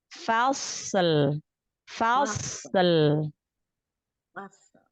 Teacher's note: Fa-nya tipis, sodnya angkat pangkal lidah, isti'la, itbaq, lalu lamnya tipiskan lagi.